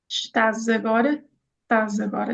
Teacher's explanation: And you put a z, which again is very clever because an s between two vowels will sound like a z